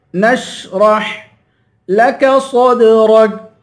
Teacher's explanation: صوت کو دال کے ساتھ ملائیں گے، دال پہ قلقلہ کریں گے، صوت کو پر پڑھیں گے.